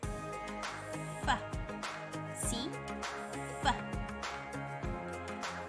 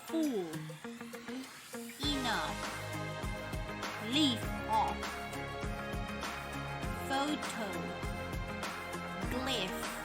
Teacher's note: voiceless fricative made by putting your upper front teeth on your lower lips